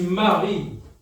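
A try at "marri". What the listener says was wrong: Avec 2 airs, prononcez bien.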